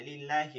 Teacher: আল্লাহ শব্দের ডানে জের আছে, যে লামে জের আছে, আল্লাহ শব্দকে চিকন করে পড়তে হবে